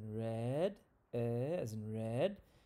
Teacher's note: It's a middle front sound, mid lower front sound